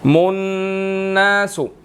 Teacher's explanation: मुन्नासु, नून मुशद्दिद है, गुन्ना करेंगे